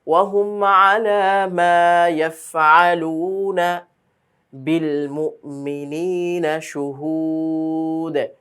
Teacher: এই আইন যেন গলা থেকে স্পষ্ট হয়, অনেকের হামজার মতো উচ্চারণ হয়ে যায়, সেটা যেন না হয়।